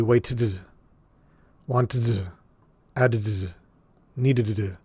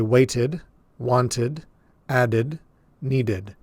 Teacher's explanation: we're adding an extra syllable here at the end so that we can hear this final D clearly